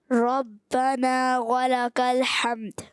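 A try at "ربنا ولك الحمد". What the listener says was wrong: حمد، کلکلا کریں،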